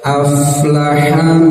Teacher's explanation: Fa bagian huruf rakhawah yang mengalir suaranya maka ketika disukunkan Biarkan saja mengalir jangan sampai terputus suaranya Jangan qod aflaha tidak aflaha seperti itu ya aflaha lihat ikhfa